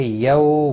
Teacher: واو لین ہے، تھوڑا نرمی کے ساتھ کھینچ کر ادا کریں گے